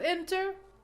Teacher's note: a general rule we have to stress the second syllable but we have schwa sound equal weak syllables so we have to stress the first one